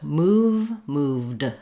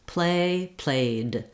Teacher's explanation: My voice is on when I'm saying the v or the a, and then I just keep my voice on and make the d, which is a voiced sound as well. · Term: voiced sounds